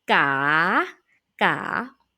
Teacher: The raising tone start at the low pitch and then raising up high pitch.